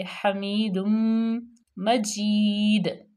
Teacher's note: تنوین کے بعد میم آ گیا تو یہاں پہ یرملون میں سے، تو یہاں پہ غنہ پیدا کریں گے